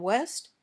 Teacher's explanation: when you say w your lips are rounded but they don't touch then your lips open and the air comes out gently